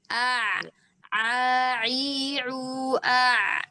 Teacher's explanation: Kalau ain kan ditenggorokan bagian tengah